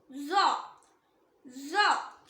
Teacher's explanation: இது same like சா. மேல் பற்களுக்கும் கீழ் பற்களுக்கும் நடுவுல நாக்கோட நுனி வெளியே வரும்போது உச்சரிக்கணும். இதுவும் ஹெவி லெட்டர், ஸோ ஹெவியா ப்ரொனவுன்ஸ் பண்ணணும்.